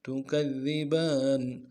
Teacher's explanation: کاف کو دال کے ساتھ ملانا ہے، دال کے اوپر تشدید زور دیں گے